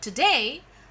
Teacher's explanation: Day is the first syllable and to is the second syllable. And whenever we tell the word today, always day gets the accent. Therefore, the fall-rise tone, as I always tell, falls on that particular syllable which has the accent.